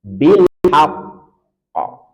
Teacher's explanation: kasus bilhaqqi kalau dia sukun atau waqaf maka ada jeda dan kita berikan sifat Qalqalah kubra yang sangat nampak pantulannya bilhaqqo jadi kita Tahan dulu baru kita berikan Qalqalah kubra bilhaqqo